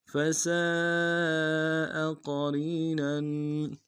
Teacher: क़रीन में क़ाफ को मोटा अदा करेंगे